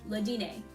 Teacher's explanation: Sometimes you pronounce R's in French, sometimes you don't. But in this case, we don't.